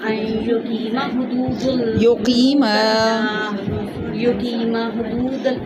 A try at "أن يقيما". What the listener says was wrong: دیکھیں میم کے ساتھ زبر کے ساتھ الف ہے نا، الف مدہ ہے، اس کو تھوڑا سا لمبا کرنا ہے. ان یقیما